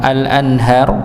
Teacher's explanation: ada nun sukun ketemu ha, maka dibaca jelas idhar.